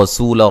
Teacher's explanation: रसू रा को मोटा अदा करेंगे। सीन को बारीक सीटी से। ला यहाँ जब वक्फ करेंगे अलिफ मद्दा में तब्दील कर देंगे।